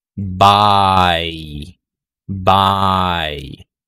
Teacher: Yung dalawang tunog, which is the A and Y sound, are both unrounded.